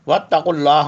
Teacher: قاف جو ہے حلق کے اوپر زبان کی جڑ سے ادا ہوگا